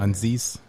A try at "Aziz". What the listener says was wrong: Aziz. You put an N in there. That's his last. You mixing his first and last names.